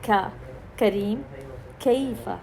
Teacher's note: اکثر وسط اللسان کی جانب سے تالو کے نرم اور سخت حصے کے ملنے والی جگہ سے ہم کاف ادا کرتے ہیں